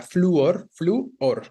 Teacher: La U es la vocal cerrada tónica · Es un hiato específicamente, pero de vocal cerrada tónica